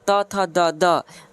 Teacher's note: त वर्ग जो होता है ना है त थ द ध त वर्ग में जितने सारे शब्द आते हैं पांचों सब का उच्चारण दंत से होता है